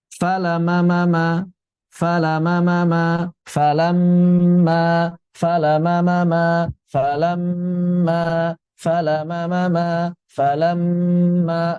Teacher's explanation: falamma di sini seperti ada dua mim yang sukun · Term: gunnah